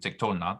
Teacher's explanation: Before the consonantal affirmative na, which is light in nature, that is, it does not draw the accent to it, as in tiktolna. The vowel holum is retained and accented.